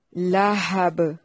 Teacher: لہب لام کو لمبا نہیں کرنا. با پہ وقف کی صورت میں قلقلہ ہوگا.